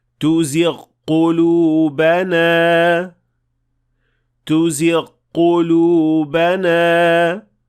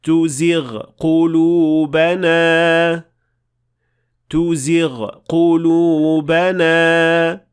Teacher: it should sound like two separate letters, since these two sounds cannot and should not be assimilated.